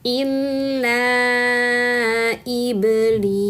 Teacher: Di sini illa panjang empat harakat. Ini adalah mad jaiz munfasil ya.